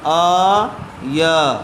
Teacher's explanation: آ پہ بھی کھڑا زبر ہے اور یا پہ بھی، تو دونوں کو برابر کھینچ کر پڑھیں گے